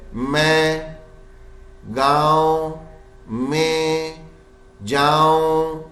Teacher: میں اب یہ جو نون کی آواز نہیں ہے مین نہیں پڑھ رہے میں گاؤں. اب یہ ناک میں سے ایک آواز بس آخر میں آ رہی ہے نون کی آواز نہیں ہے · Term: نون غنّے